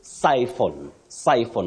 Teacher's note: that word has the stress at the onset. When I talk about stress at the onset, I refer to the beginning of that word, the first syllable.